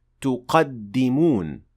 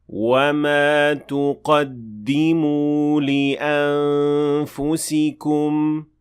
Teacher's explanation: But this verb will look like this when it is in jazm state, and the nun will be completely dropped and it will not be pronounced